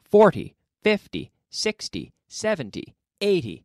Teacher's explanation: multiples of 10 then the stress falls on the first syllable